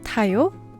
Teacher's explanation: the verb for ride with a rising intonation for it's a question